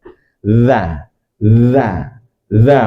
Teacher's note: Huruf za ini huruf yang keluar dari ujung lidah bertemu dengan ujung gigi seri atas ini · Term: huruf dza